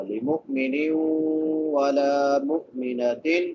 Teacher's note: نون کے نیچے تنوین ہے، نون تنوین کے بعد واو آ گیا ہے حروف یر معلوم میں سے، تو ادغام مع الغنہ ہوگا۔